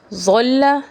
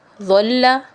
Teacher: ظا کی آواز موٹی اور نرم، ضاد کی آواز بہت موٹی، نرم اور جماؤ کے ساتھ